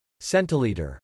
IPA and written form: (ˈsɛntɪˌliːtə) (Centilitre)